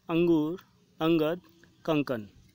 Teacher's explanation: अनुस्वार यह स्वर के बाद आने वाला व्यंजन है जिसकी ध्वनि नाक से निकलती है